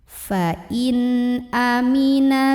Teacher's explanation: Halqi itu tenggorokan ya, yaitu hamzah. Maka nun sukunnya ini kita bunyikan dengan jelas, bunyinya an dan tidak ditahan. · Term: idhar halqi